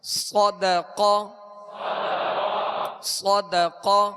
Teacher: ہونٹ گول کیے بغیر ان کو پر پڑھنا ہے. اور اسی طرح صاد کے اندر جو سیٹی کی آواز ہے یہ اس کی خوبی ہے، اور اس کا پر پڑھنا اس کی خوبی ہے. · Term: حروف مستعلیہ